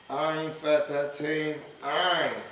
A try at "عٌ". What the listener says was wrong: عين فتحتين عن. عن. عن. Now don't say عن. No. عن. Don't elongate. عين كسرتين عين. عين. عين. No, no. Say عين. عن. عين. عن. عين. Where's the عين coming from? Middle of the throat. Same place of the ha.